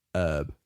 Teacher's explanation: They say herb without the H